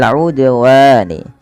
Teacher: udwani dal termasuk lagi huruf qalqalah ya huruf qalqalah yang lima ba jim dal th maka mantulkanlah huruf dal itu ketika dia sukun